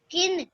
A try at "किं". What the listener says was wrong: किन नहीं बेटा, देखो दीपिका, ये का पे जो छोटी की मात्रा है इसके ऊपर क्या है? अंक की मात्रा भी है, अंकी, तो इसको हम ना में नहीं पढ़ेंगे, किन में नहीं पढ़ेंगे।